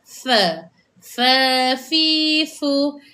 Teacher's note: Jadi wafir fir ini fir kena betul makhraj huruf fa di mana huruf fa gigi kacip ni dia dirapatkan ke perut bibir bawah